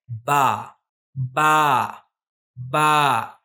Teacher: बा बा और एक चीज आपने नोटिस की होगी कि जब हम बा कहते हैं तो थोड़ा सा इसमें खींचा जाता है